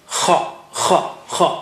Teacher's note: And kha comes from upper part of the throat.